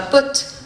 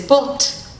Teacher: Le R était là, mais il était vocalisé. Et le français, lui, il considérait qu'on n'avait pas prononcé le R.